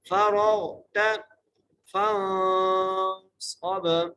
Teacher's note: فا کو نون سے ملانا ہے، نون پر غنہ کرنا ہے، صاد کو موٹا کر کے پڑھنا ہے، صاد کو با سے ملانا ہے اور با پر قلقلہ کریں گے۔